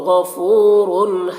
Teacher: गैन को पुर पढ़ेंगे, हुरूफ मुस्तालिया में से फू में वाव मद्दा है, इसे एक अलिफ के बराबर खींचेंगे।